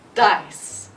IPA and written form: daɪs (dice)